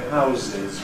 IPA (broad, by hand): ˈhaʊzɪz